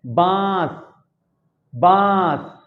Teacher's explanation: हवा कहां से निकलती है? हमारे नाक और मुख दोनों से निकलती है। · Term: अनुनासिक